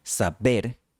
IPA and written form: sa'beɾ (saber)